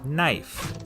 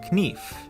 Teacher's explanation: the word knife in Middle English it was pronounced knif but after The Vowel Shift the K became silent and the E turned to the dip thong I as you